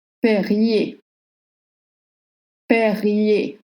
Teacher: Don't pronounce the R at the end of Perrier.